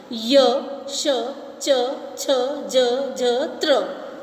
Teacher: जिन व्यंजनों के उच्चारण में जीभ की नोक मसूड़े के पीछे तालु के कठोर भाग का स्पर्श करती है वे कठोर तालु व्यंजन कहलाते हैं।